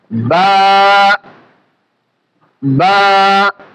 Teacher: দুই ঠোঁটের ভিজা অংশ থেকে আমরা বাকে উচ্চারণ করব। বা, বা। মুখ গোল করা যাবে না, সবসময় খেয়াল রাখবেন।